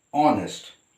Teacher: it is again beginning with the consonant h but it is here h is silent and we pronounce it as honest